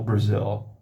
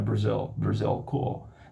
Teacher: esse som assim escuro, feito do L ali, sem usar a ponta da língua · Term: Dark L